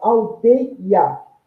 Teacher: eu pronunciei num único impulso esse ei, e houve aí uma interrupção, um intervalo com a vogal A, que é um hiato, terminando a palavra, né?